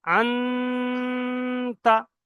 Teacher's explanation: এই নুন সাকিনের আওয়াজটা যে নাকের মধ্যে ধরে রাখছি এটাইকে বলা হয় ইকফা। নুন সাকিনের আওয়াজটাকে নাকে ধরে রাখছি, আন্তা, এটাইকে ইকফা বলা হয়।